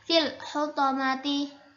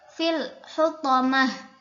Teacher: ada tak marbutoh diganti dengan ha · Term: ibdal